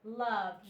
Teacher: This ed makes the D sound. The E is silent. You don't even hear it.